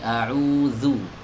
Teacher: kesalahan yang banyak terjadi itu adalah tidak mau menggesek huruf zalnya ini, jadi cuma menempelkan saja